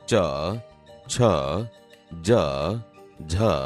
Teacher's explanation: આપણી જીભ તાળવાને અડે છે, તેથી તે તાલવ્ય વ્યંજન છે.